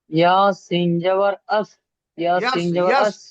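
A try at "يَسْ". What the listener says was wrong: ইয়াস, ইয়াস, ইয়াসিন জাবার ইয়াস, আপনি ইয়া জাবারটাকে একদম আ করে ফেলছেন। ইয়াসিন জাবার ইয়াস।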